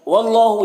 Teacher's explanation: یہاں پر اللہ کلام سے پہلے واو کے اوپر زبر ہے تو اللہ کلام کو پر پڑھیں گے